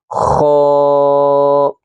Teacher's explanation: خا کو پڑھتے وقت حلق کے اوپر والے حصے سے خا کو ادا کریں گے، خا۔ حلق کے اوپر والے حصے پہ زور لگانا ہے، خا۔